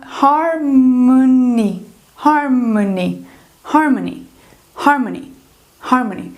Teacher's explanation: Então, o que vai acontecer aqui? Esse O, ele vai ser reduzido ao som do schwa